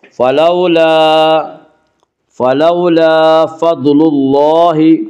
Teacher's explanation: فلو، لا الف مدہ، الف ہمیشہ مدہ ہوتا ہے، الف سے پہلے ہمیشہ زبر ہوتا ہے، الف مدہ کو 1 الف کے برابر کھینچ کر پڑھیں گے۔ فلولا فضل اللہ، ضاد کو پر پڑھیں گے، ضاد حروف مستعلیہ میں سے ہے، حروف مستعلیہ 7 ہیں جن کا مجموعہ خص ضغط قز، یعنی خا صاد ضاد غین طا قاف ظا، یہ 7 حروف ہمیشہ ہر حال میں پر پڑے جاتے ہیں۔